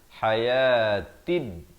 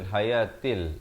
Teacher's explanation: Di sini ta beri kasrah bertemu dal yang bertanda mati, alif lam syamsiah, lam di sini tidak dibunyikan